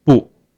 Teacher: But when this 不 used alone, it's 不, the fourth tone